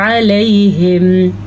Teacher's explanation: اب ہا پہ ہمارے حلق میں آواز رک رہی ہے تو وہ ہی ہا کا مخرج ہے